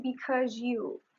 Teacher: There is the | ʒ | sound. It is called assimilation because the last sound | z | became | ʒ | because it is trying to assimilate to the previous sound.